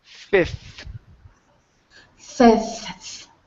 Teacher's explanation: we go bounce on that F into the th